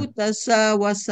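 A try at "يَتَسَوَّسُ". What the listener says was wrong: Yatasawasu. Mudore ujungnya doma.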